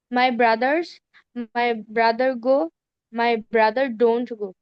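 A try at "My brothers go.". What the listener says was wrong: এখানে তোমার এসটা কি স্পষ্ট করতে হবে, তো ব্রাদার বলতে হবে, গোজ হয়ে যাবে গা।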